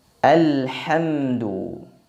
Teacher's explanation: Adapun pada pengucapan huruf ha tidak ada seraknya. Nafas, udara, angin, suaranya mengalir dengan bebas, mengalir dengan deras.